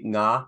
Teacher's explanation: NG is good because it identifies the place of articulation as velar. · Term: engma